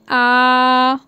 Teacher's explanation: मतलब आपको इसमें बोलने में बहुत ज़्यादा वो लग रहा है ना, विवृत, मतलब आपका जो मुख है जो आपका फैल रहा है पूरी जगह। बोलिए आ, आप पूरा मुंह खोल देंगे, इसलिए इसको बोला गया है विवृत स्वर। मतलब आपका इसमें पूरा मुख जो है वो पूरा ओपन हो जाएगा, इसलिए इसको विवृत स्वर कहते हैं।